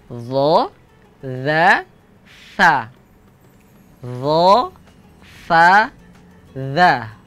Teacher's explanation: tiga huruf ini satu tempat ya tempat keluarnya sama ujung lidah bertemu ujung gigi seri yang atas tetapi di antara sifat-sifatnya dia berbeda fokus di sini adalah dza